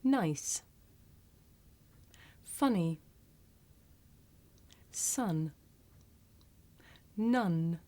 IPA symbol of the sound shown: n